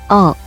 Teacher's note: 어, Para pronunciar bien esta vocal, no digas la O que nosotros decimos, sino, ensancha más la boca, en lugar de hacer como un cero con la boca, haz uno de verdad.